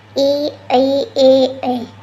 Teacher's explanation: जीभ के आगे भाग से बोले जाते हैं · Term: अगर स्वर